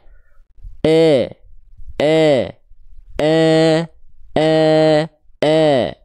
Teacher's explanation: yang terdengar bukan I tapi E E